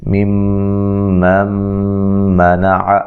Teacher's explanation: یہاں میم مشدد پہ غنہ ضروری ہے